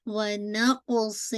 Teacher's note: قاف کو heavy and then قلقلہ